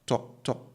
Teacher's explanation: in chi it's a very short O sound so it's like saying tall but cutting it short in the middle